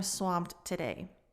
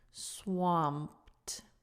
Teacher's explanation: the p goes straight into the d